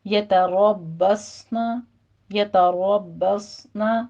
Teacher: را مفخم پڑھتے ہوئے آگے باقی تشدید ادا کرنی ہے، پھر اس کے بعد صاد کو بھی پر پڑھنا ہے